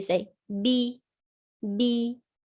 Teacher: if you add a kasra, you make it flat in your mouth and the tongue from the middle rises up. You say b, b.